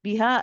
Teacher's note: Biha, again, both light letters. Make sure this ha is from the bottom of the throat. It's the relaxed one. No forceful pushing or no tension in the throat.